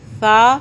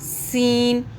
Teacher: اب ڈفرنس آپ کو بتانے لگی ہوں کہ سا سین، سا میں سیٹی کی آواز نہیں ہے، سین میں سیٹی کی آواز ہے